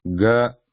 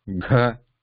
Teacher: Ga, vibrational, less breath. Gha, vibrational, more breath.